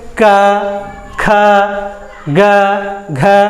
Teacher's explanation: आपका कंठ के पास हाथ लगाइए, तो घर्षण आप देखेंगे कि कंठ से उच्चारित हो रहा है